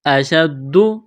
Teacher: دال کو دبانا ہے تشدید کی وجہ سے